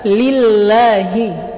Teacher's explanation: berhati-hati pula jangan menebalkan huruf lam seperti pada kata lillahi